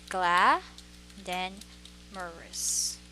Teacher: So it's gla, then morous. So that is the stress, gla.